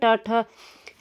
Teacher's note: ट वर्ग का होता है मूर्धा से, मूर्धा।